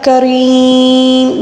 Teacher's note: ساتھ تبدیل کر کے پڑھیں گے، تو ہم یا مدہ کو جب زیر کو ہم ساکن کے ساتھ پڑھیں گے وقف کے دوران، تو ہم یا مدہ کو 3 الف کے برابر کھینچ کر پڑھیں گے